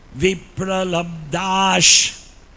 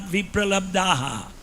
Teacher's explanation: So when there is a samhita path, there is no pronunciation of visarga.